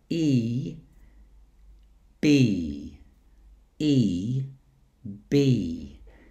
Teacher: Today we're going to focus on the front of the mouth, starting with the tongue high up for E as in B. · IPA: iː